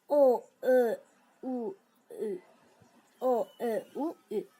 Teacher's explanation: Dodaqlana nə deməkdir? Yəni biz bu saitlər deyəndə dodağımız belə yumru olur və eşiyə çıxır.